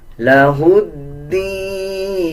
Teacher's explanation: ہا کو دال کے ساتھ ملا کے پڑھا جائے گا، دال سے پہلے یہ لام اور الف ہے، ان دونوں کو سکپ کر دیا جائے گا